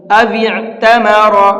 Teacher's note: او اعتمر، اس لفظ کو دھیان سے سنیے گا، او اعتمر، واو کو عین کے اندر ملائیں گے، یہ الف نہیں پڑھا جائے گا، او، اس طرح سے، اور را کو پر کر کے پڑھیں گے۔